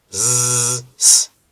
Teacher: They are similar in some way, like the shape is similar. My tongue, my shape is same position, same place, but the one has a voice and the other one doesn't.